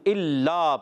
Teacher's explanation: الا یہ حمزہ خوب ظاہر کر کے پڑھیں گے. یہ الف نہیں حمزہ ہے، لام الف زبر لا، ایک الف کھینچنا ہے، لام پر تشدید ہے، ذرا رک کر بھی پڑھنا ہے.